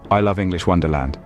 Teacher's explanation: my voice rose on love and fell on Wonderland that's because I'm expressing a strong positive emotion about English Wonderland